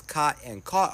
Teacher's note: the cot-caught merger, when the vowels in the words cot and caught are pronounced the same